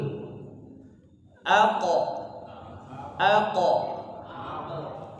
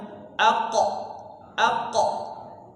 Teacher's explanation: ketika sukun Huruf qf dia punya sifat Qalqalah mantul